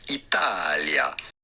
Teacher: You do want to emphasize and accentuate the middle syllable, the ta syllable.